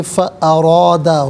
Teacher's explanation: فا علیحدہ ہے، ارادہ علیحدہ ہے، ملا کر پڑھیں گے، فارادہ، را پر زبر ہے، را کو پر کر کے پڑھیں گے